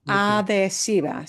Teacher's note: So that H has to be written, but you don't hear it.